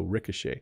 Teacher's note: the O has more of an AA sound Ricochet and then the CH is making a sh sound